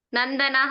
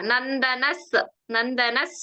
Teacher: ಪೂರ್ತಿ ವಿಸರ್ಗ ಬೇಡ ಅಲ್ಲಿ ಮುಂದಿನ ಅಕ್ಷರ ಸ ಇದೆ ಅಲ್ವಾ